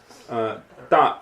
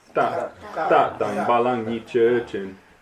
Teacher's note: don't aspirate the ta. Ta And don't spit it out either.